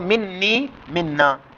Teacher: نون ساکن کا نون متحرک کے اندر ادغام ہو گیا، جس کو ادغام مثلین کہتے ہیں